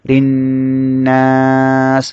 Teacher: র মধ্যে জের হওয়ার কারণে র বারেক করে পড়তে হবে পাতলা করে পড়তে হবে